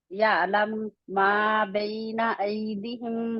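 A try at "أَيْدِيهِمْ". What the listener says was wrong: ऐदीहिम, ऐदीहिम। मदलीन है, मदलीन है, और क्या है, हरूफे मद्दा भी है ना, है ना, लीन भी है। तो जहां पे आपकी हरकत थे हैं, वहां पे आप खींच रहे हैं, और जहां पे आपकी हरकत नहीं है, जो सॉरी, जहां पे मद है वहां पे नहीं खींच रहे।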